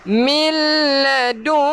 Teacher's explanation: Memang kita kena dengung, tetapi bila berjumpa lam ataupun ra, kita tak perlu dengung.